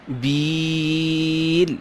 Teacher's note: بیل لمبا کیا بیل کو کیونکہ یا کے اوپر جزم آ رہی ہے اس سے پہلے زیر ہے تو یہاں پہ یا مدہ ہے